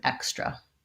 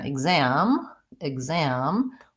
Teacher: on extra we have first syllable stress and we have the KS sound and on example we have second syllable stress and we have the GZ